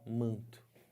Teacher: Aqui o N não é falado, ele só está nasalizando o A. Ele faz parte, esse N aqui, de um dígrafo. · Esse N aqui não tem um som próprio. Ele está servindo somente para quê? Para nasalizar o A, só para isso. Então, embora eu tenha uma consoante do lado da outra, eu não tenho encontro consonantal na palavra manto.